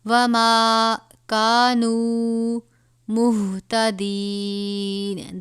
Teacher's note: یہ موٹا والا ہا ہے، سینے سے خارج ہوتا ہے